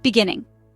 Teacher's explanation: Next word, beginning. 3 syllables. Stress is on second syllable.